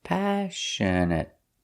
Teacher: The stress is on the first syllable,